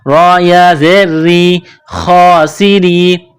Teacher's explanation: را کو باریک کرنا ہے ، را کے نیچے زیر ہے، را یا زیر ری، خاسری،